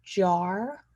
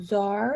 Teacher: And saying czar instead of jar. So instead of that J, replacing it with a ZH sound.